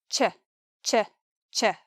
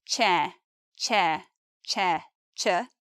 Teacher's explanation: Well, not really two sounds together, a blend, or they're close to that and close to that. So this one is made up of the t and sh, but together it's ch